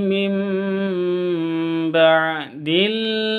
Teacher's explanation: cara bacanya mengganti sifatnya ba menjadi mim contohnya mim langsung mingkem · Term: iqlab